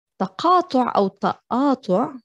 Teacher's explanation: because we like to pronounce the qaf as a glottal stop